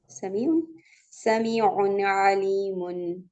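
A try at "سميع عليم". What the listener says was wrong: आइन पे कलकला नहीं करना। समीउन अलीमुन।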